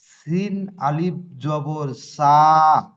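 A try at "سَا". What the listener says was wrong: অক্ষরে টান আসছে না, অক্ষরে টান আসছে না। সিন, আলিফ জাবার সা। একদম জোশের সঙ্গে বলেন।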